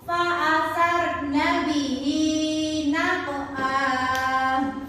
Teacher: Qalqalah sughra itu terletak di tengah ayat dan dibaca dengan pantulan yang tidak kuat.